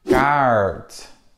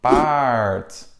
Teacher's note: passons au deuxième type de R, R, en fin de mot ou devant une consonne en milieu de mot. Alors, ce R est plutôt prononcé comme un R américain